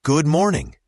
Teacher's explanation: Notice how good and morning can blend. The D in good is often very light, almost like it disappears, especially when we say it quickly.